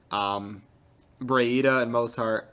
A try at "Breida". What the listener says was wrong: You're confusing me. You called him Brahita. It's Breida. Brahita. There's no H. You said Brahita. yes, you did. You said Brahita. Like bruh. Breida.